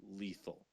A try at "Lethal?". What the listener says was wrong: No. Lethal. You must make it sound questioning. For some reason, Nathalia, the owner, put a question mark at the end of it.